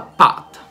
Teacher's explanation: questi suoni vengono aspirate in determinate circostanze quando per esempio queste lettere sono all'inizio di una parola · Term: suono aspirato